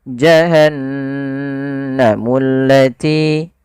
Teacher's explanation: bacaan ghunnah ghunnah yaitu membunyikan suara hingga masuk ke rongga hidung kita maka suara nunnya dimasukkan ke rongga hidung